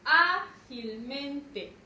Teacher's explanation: Recae su mayor fuerza de voz en A.